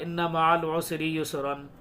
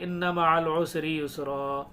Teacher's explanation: जब दो ज़बर पर हम सांस तोड़ेंगे, वक्फ करेंगे, तो एक ज़बर के साथ अलिफ पढ़ा जाएगा